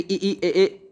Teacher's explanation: जिन स्वरों के उच्चारण में जिव्या का अग्र भाग सक्रिय रहता है अग्र स्वर कहते हैं